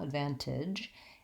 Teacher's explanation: We have an unstressed and reduced I vowel, the pink pig vowel, advantage, and we end in our J sound.